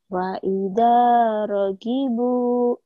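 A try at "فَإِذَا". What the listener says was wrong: Fa-nya. Fa'idza ragibu.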